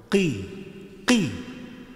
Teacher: Huruf qaf dan huruf kaf apabila sama-sama diberikan kasroh, maka cara membacanya hampir mirip. Tetapi huruf qi itu ada huruf qalqalahnya atau huruf yang agak menyangkut di tenggorokan.